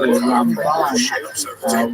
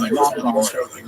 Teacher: we say Ramban with the accent on the last syllable, and Rambam, the accent on the first syllable